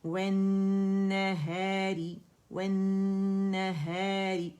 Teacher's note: اچھا را کے نیچے کسرہ ہے تو یہ باریکی سے ادا ہوگا، ٹھیک ہے، لیکن ہم نے نون کو کیا کرنا ہے کہ اس کو جلدی سے نہیں گزارنا، اس کا غنہ ضرور کرنا ہے